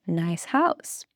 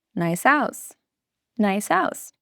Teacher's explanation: The S at the end of nice jumps to the beginning of house, and they become one sound, one flowing sound. That is connected speech.